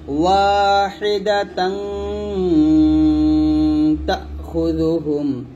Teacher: এই যে তানবিনের পর তা আসছে, এখানে আমরা গুণা পাতলা করব, তাহলে হবে ওয়াহিদাতাং তাখুযুহুম কওমান তাজহালুন। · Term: পাতলা গুণাটা